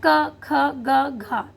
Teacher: तो क अल्प प्राण, ख महाप्राण, गा अल्प प्राण और घ महाप्राण